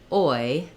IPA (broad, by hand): ɔɪ